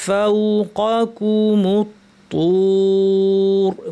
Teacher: মুত্তুর পড়ার সময় একইভাবে মিম পাতলা, ত ভারী থাকবে এবং তুর, এখানে রটা ভারী করে আমাদেরকে থামতে হবে।